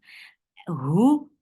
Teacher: Hu for the circle lips, the sound is short.